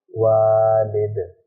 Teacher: جزم آنے کی وجہ سے دال کو قلقلہ کر کے پڑھیں گے